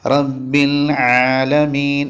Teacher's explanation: ഐന് പറയുമ്പോൾ തൊണ്ടയുടെ മധ്യത്തിൽ നിന്നാണ് ഉച്ചരിക്കേണ്ടത് അതോടൊപ്പം തന്നെ മഹ്റജിൽ അമർത്താതെ വളരെ സിമ്പിൾ ആയിട്ട് റബ്ബിൽ ആലമീൻ നാവ് കുറച്ച്